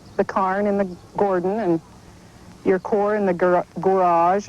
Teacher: the biggest peculiarity is the switch of the A and O vowel sounds